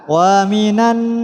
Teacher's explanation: Wa minan nasi terdapat nun tasydid, maka harus dibaca dengung, ditahan. Wa minan tidak boleh dibaca wa minan nasi, tapi harus ditahan.